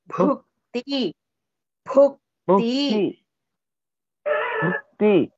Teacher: ಭುಕ್ತಿ ಭಸ್ ಮಹಾಪ್ರಾಣಿ you have to stress